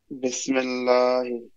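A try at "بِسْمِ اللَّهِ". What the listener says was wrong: মাশাআল্লাহ।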